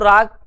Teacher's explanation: रा के उच्चारण में जीव में कंपन वाइब्रेशन होता है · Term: प्रकंपित व्यंजन